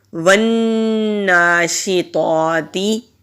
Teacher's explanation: جب نون مشدد ہوتا ہے وہاں ہم غنہ کرتے ہیں اور 1 الف کے برابر کھینچ کر بھی پڑھیں گے